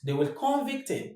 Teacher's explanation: As a verb, the stress falls on the second syllable.